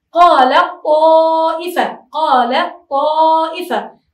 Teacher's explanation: هنا التاء أدخلت في الطاء